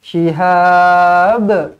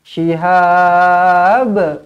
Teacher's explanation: Kena lantun qalqalah lah kalau nak berhenti. Shihab. Kalau nak sambung, bi shihabin qabasil bil.